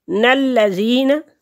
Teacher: یا ساکن سے پہلے لفظ کے نیچے زیر ہے تو یہ یا مدہ ہے، ایک حرکت کے برابر اس کو کھینچیں گے